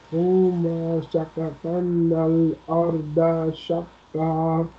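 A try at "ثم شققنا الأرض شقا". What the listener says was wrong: Look, this is sukoon on kaf. So don't pronounce fatah here. Shakaknal.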